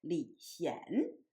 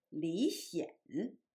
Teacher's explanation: It is a bit of awkward that the two princes' names sound exactly the same in English, but in Chinese, one of them pronounced in the second tone, and the younger one's name pronounced in the third tone